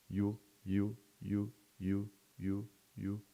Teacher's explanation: And it happens more in the region that we call palatal. And the sound is described as voiced, palatal, and approximant, which means voiced because the vocal cords are vibrating. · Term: the sound Y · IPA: /j/